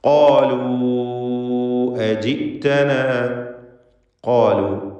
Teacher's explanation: ഖാഫും അതിൻ്റെ ദീർഘാക്ഷരമായ അലിഫും തഫ്ഖീം ചെയ്യുക, തടിപ്പിച്ച് സ്വരഭാരത്തോടെ ഉച്ചരിക്കുക. ഖാലു എന്നതിലെ വാവിൻ്റെ ദീർഘം മദ് മുൻഫസിൽ ജായിസാണ്.